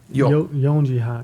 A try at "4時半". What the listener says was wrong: There is no yonji. That's like a It's got to be yoji. it's never yonji. It's also never shiji for the record. That's one word it has to be for, but it's like it's one of those Japanese things you have to remember. Yoji is special.